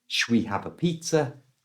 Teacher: the shall and we have been squashed together and become shwe